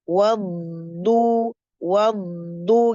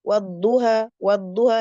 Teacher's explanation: sifat yang istimewa istitalah artinya memanjang jadi ditahan agak lama dulu